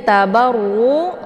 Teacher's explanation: ya tapi Anta ya sakakan ini nunnya digantung kemudian tabaru runya ada wau sukun sebelumnya harakat zumah ini dinamakan dengan Mad Thobi'i zahiri dibaca panjang dua harakat dan untuk hukum bacaan rnya dibaca tebal karena ra ini berharakat